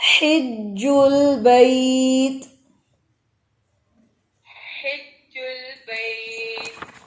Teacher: اس میں ہا کے اندر ہمس واضح رکھے